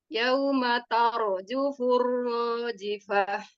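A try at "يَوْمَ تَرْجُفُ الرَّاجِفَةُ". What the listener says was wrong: Yaumatar. Tanya tipis, ro-nya saja yang tebal. Tar. tar.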